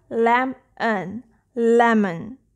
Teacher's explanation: O is saying the schwa sound